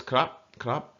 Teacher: it's always high tone and it's always cop